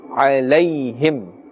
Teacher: Because this is ya leen. Ya sakin with a fatha before it means there's no pulling.